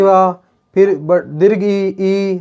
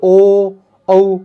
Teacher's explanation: फिर आगे देखिए ऊ ए नहीं वा गोल, ए आई नहीं वा, ओ। अब देखिए ओ औ हो गया गोल होठ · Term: वृत्ताकार